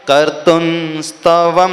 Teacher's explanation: अब यहाँ पे भी आपको ऐसा भी पाठ मिलेगा, कर्तुम स्तवम, न को उच्चारण में मिलेगा क्योंकि आगे स है, स तवर्ग का उच्चारण एक ही स्थान से होता है